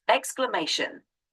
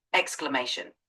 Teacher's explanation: the emphasis is on the third syllable